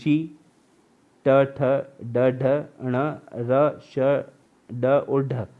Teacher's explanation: इनका जो साउंड होता है मूर्धा और जीभ से होता है, इसलिए इसे मूर्धन्य कहते हैं